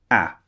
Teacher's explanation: the second sound ah is very very short it comes out in a very short bursts